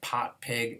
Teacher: we'll always find the P phoneme being pronounced as this aspirated one